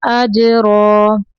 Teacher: جیم کو قلقلہ کرنا ہے